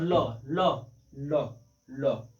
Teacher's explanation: र और ल जो है दंत मूल में आते हैं